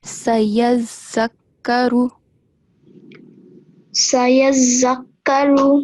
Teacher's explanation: on the letter zal, make sure you stress, and it will sound like there are two letter zal